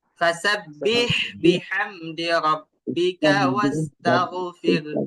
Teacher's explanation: কণ্ঠনালীর মাঝখান থেকে। আর হা উচ্চারণ করার সময় বাতাস ভরপুর বের করতে হবে।